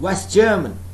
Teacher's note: So that means I am dropping the sound t of West.